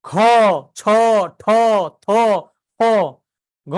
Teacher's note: ঢ ভ এগুলো হচ্ছে কি মহাপ্রাণ তাহলে এগুলা ওই যে বললাম তখন একটা গরম বাতাস কিন্তু আপনার হাতের মধ্যে লাগে তাই না গরম বাতাস মহাপ্রাণগুলো বলার সময়